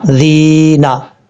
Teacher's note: ذال جو ہے بغیر سٹی کے ساتھ پڑھا جائے گا